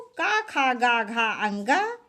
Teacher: इनका सब का उच्चारण स्थान कंठ होता है